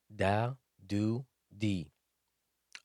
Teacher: It is pronounced from the tip of the tongue towards the upper incisors. Dal is also a light letter.